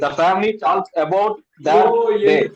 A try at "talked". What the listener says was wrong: Silent டாக்டுன்னு படிக்கணும். எல்ல உச்சரிக்க கூடாது. The family talked about the day. எல்ல உச்சரிக்க கூடாது. எல் வந்து